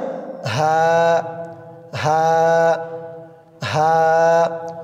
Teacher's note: কণ্ঠনালীর শুরু হইতে উচ্চারিত হয় অর্থাৎ গলার শুরু থেকে উচ্চারিত হয় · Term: হার মাখরাজ